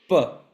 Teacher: there's no teeth involved there's no tongue involved now it's the lips